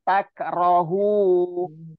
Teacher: Jadi nggak jelas, bukan antak, bukan, tapi samarnya nun sukun bertemu ta. Tak rohu. Jadi ditahan satu ayunan atau 2 harokat. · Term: ikhfa